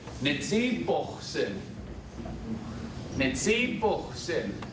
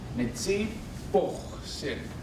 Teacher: And it has a velar fricative